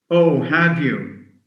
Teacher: You need to emphasize the word have, because it's important.